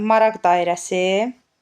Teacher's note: Dedik ki, adi vəziyyətdə samitlə başlayan, samitlə başlayan şəkilçi və ya söz qəbul etdikdə, məsələn, maraq sözünü dedik ki, maraq sözünü adi vəziyyətdə x ilə tələffüz olunur. Maraq sözünə samitlə başlayan şəkilçi artırdım. · Burda da q samitini x kimi tələffüz eləcəyik. Səbəbi də özündən sonra samit gəlməsidir.